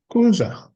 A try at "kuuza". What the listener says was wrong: kuuza. So you don't say it as one word as kuza. Those are double u. So yes, the right word is kuuza.